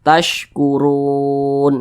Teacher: huruf ro-nya berbaris dhammah, maka huruf ro-nya dibaca panjang. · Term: mad arid li sukun